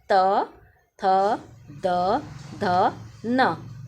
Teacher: व्य व्यंजन त थ द ध न दंत व्यंजन है मींस दांतों को स्पर्श करते हुए यह निकलती है